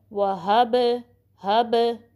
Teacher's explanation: با کو جو ساکن جو پلٹنے کی آواز ہے اس کو زبر میں بھی نہیں چینج کرنا